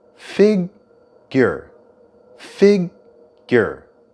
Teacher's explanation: there's a slight y sound in the middle of the word figure.